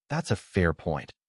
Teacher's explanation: One detail to notice while saying it is intonation on, that's a fair point. Rising tone on fair to show openness.